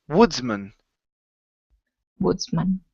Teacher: So instead of, and this, excuse me, this happens in most cases when you have the word man at the end of a word. Okay, when man is individual, when it's sitting out by itself, we pronounce it with the short a, man. But once you stick it on the end of a word, it becomes mun.